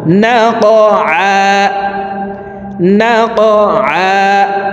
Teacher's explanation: কফ হরফ আছে, উপরের দিকে ধাবিত করে ধাক্কা দিয়ে উচ্চারণ করব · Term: কলকলার হরফ